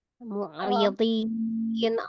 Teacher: Dodnya aja tuh tebal. Ri-nya kan kasroh tipis ya.